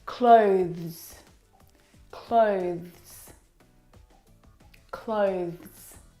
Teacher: the reason why it's especially difficult is because of the two final consonant sounds, the th and the zz plural sound.